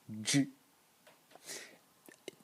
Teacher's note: this is only the explosion, a slightly voiced explosion of the ch